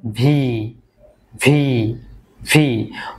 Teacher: যখন আপনারা উচ্চারণ করবেন তখন আপনাদের উপরের যে দাত রয়েছে সেটা নিচের ঠোটের সঙ্গে টাচ করবে